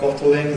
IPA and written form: ˈbɒtl̩ɪŋ (bottling)